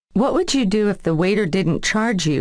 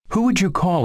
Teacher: the d and y sounds assimilate to j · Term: assimilation of d and y